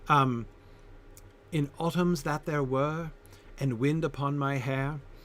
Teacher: In an English accent, were and hair rhyme more closely than in an American accent, but not perfectly.